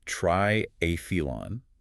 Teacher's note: The temptation is to use a hard T sound for the "the," but it uses the standard "the" sound. It's pronounced triathlon, with the stress on the second syllable.